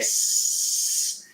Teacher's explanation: our S audio here is actually a pretty high frequency